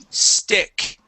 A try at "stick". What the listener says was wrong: Okay, you said stick. So try that word again without saying eh.